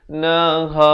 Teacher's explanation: Ha ni makhrajnya dipangkal kerongkong.